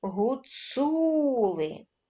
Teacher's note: твердий приголосний і голосний Отже слово Гуцули має три склади причому наголошеним буде середній склад цу